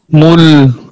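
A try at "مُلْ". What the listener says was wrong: आपने देखा ना इसमें आवाज थोड़ी सी जारी हुई है, मुकम्मल मुल नहीं, मुल भी नहीं है, बल्कि मुल ना रुकी है ना बंद हुई है। लाम में आवाज ना रुके ना बंद हो।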